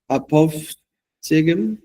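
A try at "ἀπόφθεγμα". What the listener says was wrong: I think the original Greek would have an A on the end, wouldn't it? Because it's a neuter noun. Apophthegma.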